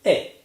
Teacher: This A that we hear in languages like Italian and Spanish is called a monophthong because it is one sound. This means that the tongue does not move or shift while producing it. The tongue moves to the point of production, it remains there, and we simply say A.